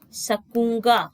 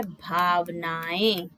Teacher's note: उच्चारण में वायु अन्य स्वरों की तरह बिना किसी अवरोध के मुख और नाक दोनों से बाहर निकलती है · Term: अनुनासिक